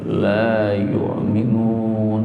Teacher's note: la-nya dipanjangkan 2 ketuk dan yu-nya ditekan, ada hamzah mati, dan la yu'minun di ujung ada mad adil sukun, panjangnya 2 sampai 6 ya, la yu'minun gitu.